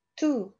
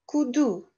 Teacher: T, D. So'zni boshida T o'qiladi. Yopiq bo'g'inlikda, ya'ni so'zni o'rtasida D qilib talaffuz qilamiz.